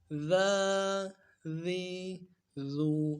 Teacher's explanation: زبان کا سرا سامنے والے دانتوں کے سرے سے جب لگے گا ذال ادا ہوگا، نرمی سے پڑھنا ہے، بالکل نرمی سے ادا کرنا ہے اس حرف کو۔